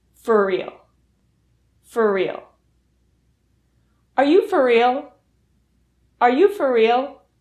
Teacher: So let's practice pronouncing for real. For real reduces so that the R sound in for and the R sound in real combine into one R sound.